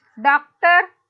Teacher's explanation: Doc will be stressed and ter will be unstressed.